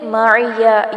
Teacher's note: یا کی زبر کو لمبا نہیں کرنا